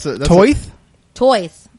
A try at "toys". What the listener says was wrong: It kind of sounds like you have a lisp when you say it. Like you're turning Mike Tyson a little bit. You're Tysoning.